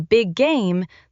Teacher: Sometimes two similar sounds meet and feel like one longer sound. In big game, the two G sounds do not need two separate explosions.